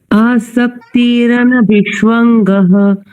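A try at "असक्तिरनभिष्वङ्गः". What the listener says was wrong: जी, आसक्ति पर ध्यान देंगे। आसक्ति नहीं है, असक्ति है। आसक्त और असक्त शब्द विलोम शब्द की तरह समझिए।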